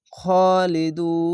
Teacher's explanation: শেষ অক্ষর সাকিন দিলে এক দুই তিন তিনটি অক্ষর তিন আলিফ টেনে পড়বেন